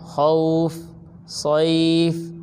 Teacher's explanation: حروف لین کو آدھے الف کے برابر کھینچ کر پڑھتے ہیں، اس سے زیادہ نہیں کھینچتے